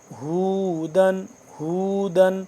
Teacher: دال دو زبردن ہے، یعنی کہ تنوین ہے، تو اس کے بعد اب اس کو ہم غنہ نہیں کر رہے